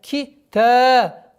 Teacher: Долгота в размере двух огласовок, фатха над буквой та.